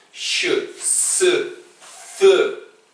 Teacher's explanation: Alors il y a ce qu'on appelle fricatif, ça frotte.